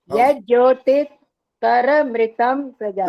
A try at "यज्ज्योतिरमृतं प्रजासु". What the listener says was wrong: नहीं, यज् ज्योतिर बोला आपने, यज् ज्योतिर, ये तो र ऊपर वाला आ गया।